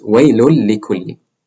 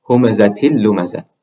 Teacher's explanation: So if you have a noon with sukoon or a tanween followed by a lam, then what you do is you drop the noon sound and replace it, just merge it with the lam sound. So waylun likulli becomes waylul likulli. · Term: idgham